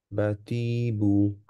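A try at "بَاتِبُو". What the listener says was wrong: আবার ফার্স্টটা একটু টান হয়ে গেছে, বা আর তা সেম থাকবে। বাতিবু।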